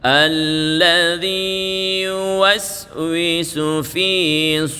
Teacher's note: Nun tasdid itu disebut dengan bacaan ghunnatul musyaddadah Dia Sempurna keluarnya di Pangkal hidung jadi suaranya di Pangkal hidung